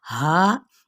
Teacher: یہ بس اقصی حلق سے ادا ہونے والا حرف ہے اور ساتھ ہی مد اصلی بالالف کا قاعدہ بھی ہو رہا ہے.